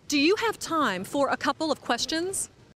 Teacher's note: Instead of saying of we just say a, because it's quicker.